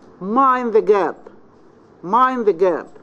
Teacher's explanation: Here the voice starts high, then falls, then rises. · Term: the full rise